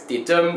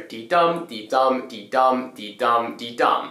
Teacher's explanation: In this case, it's called iambic pentameter, and iam is basically where it goes di-dum, so it's an unstressed syllable followed by a stressed syllable